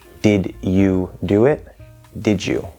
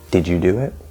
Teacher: d is voiced and j is voiced so d is j